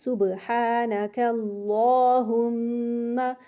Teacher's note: اللہ کا جو کھڑا زبر ہے اس کو پورا تھوڑا لمبا کر کے پڑھیں گے 2 حرکت تک، 2 حرکت جتنا لمبا کریں گے جتنی دیر میں 2 حرکتیں نکا، جیسے 2 حرکتیں پڑھی گئی ہیں اس طرح آپ نے اتنا لمبا کرنا ہے۔